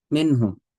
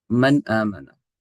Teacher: ہم نے یہ پیچھے پڑھا ہے منہم، یہ نون ساکن کے بعد کیونکہ ہا آ گیا ہے اس نون ساکن کو ظاہر کر کے پڑھیں گے بغیر غنے کے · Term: اظہار